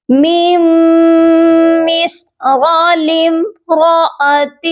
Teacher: ہم نے را کو کھینچ کر نہیں پڑھنا، را کے ساتھ الف مدہ نہیں ہے